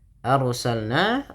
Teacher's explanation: rnya ditebalkan karena ada huruf ro yang sukun didahului dengan fathah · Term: ro yang tafhim